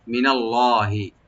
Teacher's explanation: ফাদলুম মিনাল্লাহি, মি আর না, নুনটাকে open করে পড়বো, লফজ জালালা এখানে মোটা করে ডিপ করে পড়া হবে